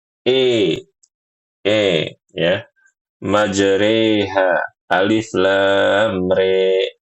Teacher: Imalah ini adalah harokat yang condong ke kasroh dan alif dicondongkan ke huruf ya. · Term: imalatul kubro